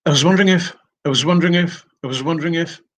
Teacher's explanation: they will be forced to reduce the vowel there in the word was and make it into this schah sound here so chunk of